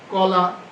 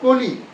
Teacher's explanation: আর এবার হচ্ছে সংবৃত মানে একটু চাপা কখন ইকারান্ত ধ্বনির পূর্বে ওই যে আমরা শুরুতে যে কথাটি বলেছিলাম কলা কলি তাহলে কলা লা মানে আকারান্ত ধ্বনির পূর্বে ক ছিল বিবৃত আর কলি লি ইকারান্ত ধ্বনির পূর্বে ক হচ্ছে সংবৃত